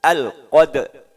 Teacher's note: ro ini tebal, maka rahang bawah maju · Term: ro-nya tebal